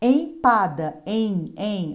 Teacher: Olha o som nasal, representado pelo M, indicada pelo M.